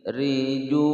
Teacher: riju panjang 2 ketukan mad tabi'i wawu sukun sebelumnya dhammah